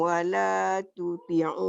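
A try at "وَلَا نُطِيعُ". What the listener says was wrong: Titiknya satu. Wala nuti'u.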